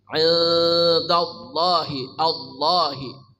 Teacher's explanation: Lam pada lafaz Allah dibaca sangat tebal, Allahi. memenuhi rongga mulut kita. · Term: lamul lafzul jalalah taghlid